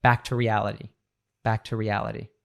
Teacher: the preposition to can be reduced to T very often